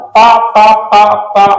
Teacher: होठों को मिलाकर बोले जाने वाले वर्ण ओष्ठय व्यंजन कहलाते हैं।